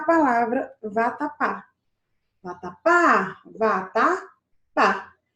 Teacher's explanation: Então, nós temos uma palavra com a última sílaba forte. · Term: oxítona